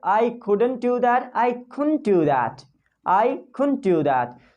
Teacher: Remove the D sound. It sounds like more native speakers.